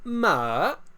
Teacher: I start medium, and then go down, and then back up. So ma, or I can do just from middle to all the way to high.